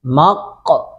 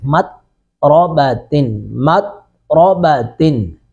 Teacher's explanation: ہم نے قوف پہ قلقلہ کیا، لیکن تا جو ہے نا، تا کے اوپر قلقلہ نہیں کریں گے